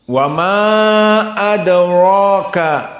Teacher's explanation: maka RO di sini mufakhamah dan dia Mad thai'i